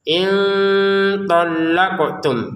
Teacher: In talaqtum, qafnya dipantulkan.